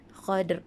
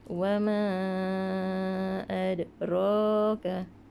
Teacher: Apabila huruf-huruf ni dia dimatikan, diwaqafkan, dia kena bunyikan berdetak. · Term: huruf qalqalah